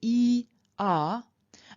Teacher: semi-vowel equivalence so for example if i say e r and i don't make a conscious break between those two vowels a y will slip in very easily